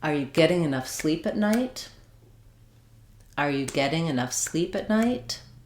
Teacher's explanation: So, my beats are on get, sleep, and night.